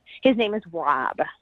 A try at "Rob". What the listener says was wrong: You sound like Yeah, it sounded like that. Wob.